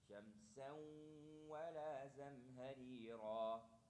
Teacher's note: you're going to do idgham with gunna. So instead of shamsan wa, shamsan wa la zamharira.